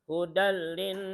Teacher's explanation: tanwin bertemu lam, namanya idgham bila guna. Hudallin, nun tasydid didengung, wajib dengung.